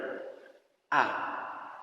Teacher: huruf ini harus benar-benar A, harus benar-benar ba. Jangan agak mengarah kepada O